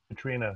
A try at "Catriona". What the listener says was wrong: Catriona. There's an O in there.